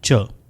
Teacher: इसके बाद एफिकेट साउंड्स हैं जो क्लोजिव भी हैं और फ्रिकेटिव भी हैं। यानी ट की तरह का स्टॉप होगा और श की तरह फ्रिक्शन होगी। तो यह साउंड बनेगा च और यह वॉइसलेस है। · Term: एफ्रिकेट साउंड्स